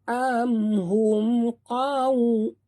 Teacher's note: Mim mati bertemu qaf juga tanpa dengung, bacaan jelas terang. Am hum qaf tebal, waw sifatnya lin, jadi kita muncungkan mulut